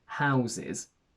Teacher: its plural is irregular because the final s turns into a z